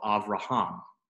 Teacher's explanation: because it has the accent on the last syllable, that is a closed syllable